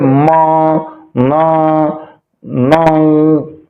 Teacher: अब ऐसी ध्वनियां भी होती है जो हम मुंह बंद रखते हैं और नाक से आवाज निकालते हैं, जिसे नेजल ध्वनियां कहा जाती है, नासिक के कहा जाता है।